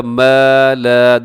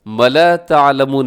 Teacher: دونوں حروف مدہ ہیں، یعنی کہ الف مدہ ہے، دونوں کو برابر لمبا کیجئے گا